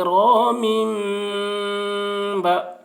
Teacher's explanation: تنوین ہے، تنوین کے بعد با آ رہا ہے اس لیے تنوین کو میم سے بدل کر غنہ اور اخفا کے ساتھ پڑھیں گے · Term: اقلاب